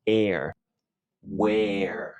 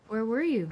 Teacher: esta palabra Where que significa dónde se pronuncia con una vocal abierta